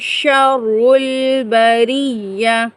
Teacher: اور اگر اولئک ہم شر البریہ، را کو پر پڑھیں گے، اور را مشدد ہے